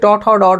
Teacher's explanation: উচ্চারণ স্থান অনুযায়ী এগুলো হচ্ছে মূর্ধা বর্ণ